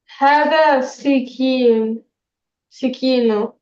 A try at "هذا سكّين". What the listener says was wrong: هذه سكين. Let's get that effect of the shadda. You see where you have that shadda? Where you double the kaf?